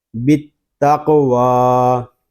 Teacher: واو کو ہم ایک الف تک کھینچ کر پڑھیں گے کیونکہ واو کے اوپر کھڑا زبر آ گیا ہے